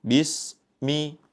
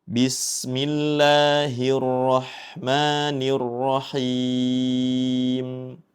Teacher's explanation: Pada yang pertama yang perlu kita perhatikan yaitu huruf sin yang bertanda sukun yang mana sin ketika bertanda sukun mempunyai sifat rakhawah yaitu dengan mengalirnya. Jangan sampai kita membacanya dengan terputus.